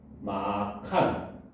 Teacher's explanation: 거센 소리 되기, 즉 자음 축약이 일어나는 겁니다